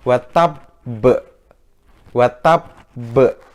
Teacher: Nah karena dia bertasdid adik-adik, maka dia harus dibaca sempurna dulu tasdidnya, baru dilepaskan qalqalahnya terakhir. Cara bacanya adalah watabbe, watabbe, jadi dia nggak boleh langsung watabbe, nggak boleh.